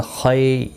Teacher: خی یا لین بھی ہے، تھوڑا نرمی کے ساتھ کھینچ کر ادا کریں گے